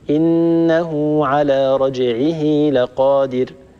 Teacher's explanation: إنه على رجعه لقادر، لرجعه الهاء فيها وقعت بين متحركين كما مر معنا، لذلك طولنا زمنها حتى تولد من زمن الكسرة، وأعني كسرة الهاء، حتى تولد منها ياء. إنه على رجعه لقادر.